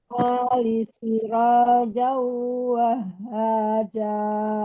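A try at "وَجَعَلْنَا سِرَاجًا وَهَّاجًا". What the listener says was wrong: Iya, bagus. Lanjut satu lagi.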